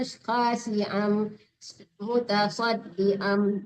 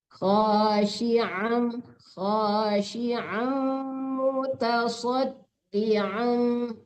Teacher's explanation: membaca ain di tengah-tengah tengorok, jangan khasiam mutasaddiam, jangan diam.